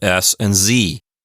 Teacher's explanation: z are the same but one's voiced and one is voiceless Z is just an S with vocal cords vibrating and an s is just a z without your vocal cords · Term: voiced and voiceless